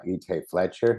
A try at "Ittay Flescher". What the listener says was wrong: Ittay Flescher with no T.